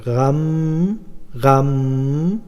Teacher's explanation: নাকের পাশে দিয়ে আওয়াজটাকে দুই হরকত পরিমাণ লম্বা করতে হয়